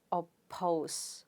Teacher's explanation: per sound is at the beginning of a stressed syllable because the stress is on the second syllable therefore you pronounce it as oppose so the per sound there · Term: aspirated